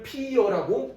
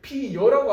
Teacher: 피여라고 하면 어가 여가 되려면 반모음 첨가가 돼야 되죠